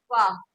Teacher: जब आप फ पेंग तो आपको पता चलेगा कि दांत हमारे कहां लग रहे हैं। ऊपर के दांतों के किनारे और नीचे के होठ के अंदरूनी हिस्से से अदा होता है